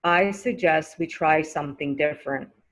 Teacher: when i say i suggest you don't hear the t sound